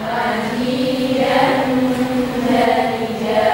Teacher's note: pengucapan jim lidah tengah terangkat sampai nempel ke langit dan juga saat dia dengungan.